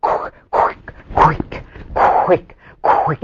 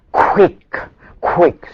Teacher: The w loses the voices. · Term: devoiced